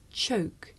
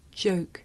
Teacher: the voiceless sound that you hear at the beginning of the word choke and the voiced sound that you hear at the beginning of the word joke